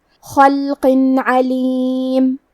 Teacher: اظہار کا معنی ہے ظاہر کرنا اور کیونکہ تنوین کی اصلیت نون ساکن ہے تو ہم یہاں تنوین ظاہر کریں گے اور اسے نون ساکن پڑھیں گے اور بغیر غنہ سے یہ حکم کو ادا کریں گے